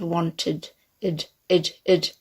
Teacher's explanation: Okay, we don't go ed, even though it is spelt like that. It has an id sound, so a bit of a schwa and a d, sort of wanted, id.